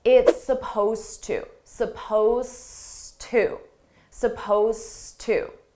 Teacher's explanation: Suppose is spelled with an ED. It's an ED verb, but you don't hear it at all.